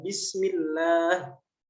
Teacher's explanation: Di situ ada lafzul jalalah yang dibaca tipis, enggak dibaca tebal ya. Bismillah. Karena sebelumnya harokatnya kasroh.